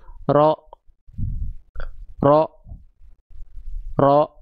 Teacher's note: Mengarah ke langit-langit tanpa nempel. Ya, sehingga bunyi vokal tebal yang kita dengar seperti O itu karena impact pangkal lidah naik, bukan karena kita memonyongkan mulut